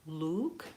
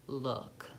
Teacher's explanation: ooh is tense, I have very rounded lips, versus my lips are still rounded, but there's less tension in my lips and my tongue · it's a rounded vowel, but it's not tense